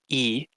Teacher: e is a high vowel because your tongue is pretty much touching the top of your mouth and your mouth is mostly closed